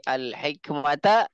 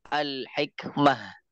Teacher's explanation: taknya ini adalah tak marbutah, maka dia digantikan jadi ha. Kalau dia waqaf, jadi al-hikmata, waqaf jadi al-hikmah.